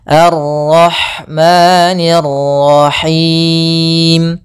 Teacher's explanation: maka di sini ada Ro tafkhim pada lafal Ar